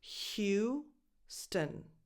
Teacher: a strong H at the beginning and then U as the word you. Houston. Ignore that O.